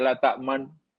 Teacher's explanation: orang tu nak baca nu, tapi nunya tak kedengaran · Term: ismam